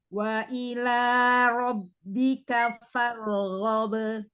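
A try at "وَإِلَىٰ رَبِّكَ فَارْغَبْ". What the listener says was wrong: Ya, coba diulang, ro-nya dialirkan. Wa ila rabbika farghab. Jadi nggak ngangkat, nggak naik ke langit-langit.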